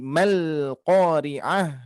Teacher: ketika ada sukun di depannya, maka mad ini akan diabaikan atau tidak dilafalkan, tidak dibaca panjang. Jadi mal qari'ah.